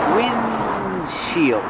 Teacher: But you don't really hear the D because it's a stop D.